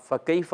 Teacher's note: تو یہ کاف جو ہے زبان کی جڑ تالو کے سخت حصے سے ادا ہوتا ہے